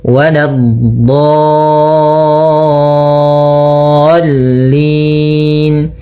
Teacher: Maka panjangkan dho-nya dulu enam harakat, kemudian sempurnakan di dho-nya, kemudian baru masukkan huruf lam. Nah, tadi juga pada huruf sebelumnya dho-nya harus ada istithalahnya sedikit. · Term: mad lazim mutsaqqal kalimi